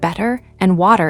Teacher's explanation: The flap T is the quick D-like sound in words like better and water in American English.